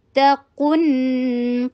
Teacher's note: قاف کے اوپر ضمہ، ہونٹوں کو گول کیجیے، قاف کو ہیوی کیجیے